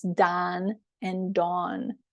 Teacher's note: some parts of the United States distinguish between the sounds of the names Don and Dawn or CAU and caught